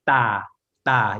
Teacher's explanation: it's between a D and a T sound. So it's not exactly D and it's not exactly T · So it's not exactly D and it's not exactly T. It's a hard T. So it's not aspirated again. So it's da, da.